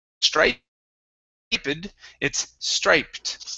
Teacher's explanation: Here we have an ED ending. Okay, the ED sounds like a T in this word because it ends with a P.